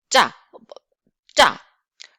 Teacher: And this is a lot of air. Your throat is blocked, and then instantaneously, spontaneously, you just put air. It's coming out.